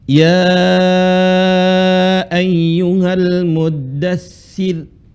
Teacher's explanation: Panjang melebihi dari dua harakat tapi penyebabnya apa ada Mad thai'i bertemu dengan Hamzah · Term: empat harakat